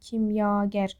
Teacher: Görürsünüz ki, bu A uzanır və kimyagər və ikinci hecadadır. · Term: uzun sait